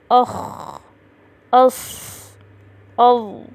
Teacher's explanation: زبان کی جڑ یعنی اقصی لسان کا اوپر تالو کی طرف اٹھ جانا، جس کی وجہ سے حرف موٹا ادا ہوتا ہے۔ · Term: استعلاء